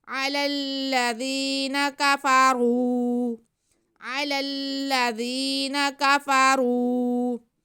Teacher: را پہ پیش ہے اس لیے را کو ہم پر کریں گے، موٹا کریں گے اور کھینچیں گے بھی